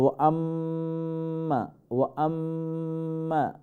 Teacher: আম্মা এখানে ওয়াজিব গুন্না, দেন মিমটা লম্বা হবে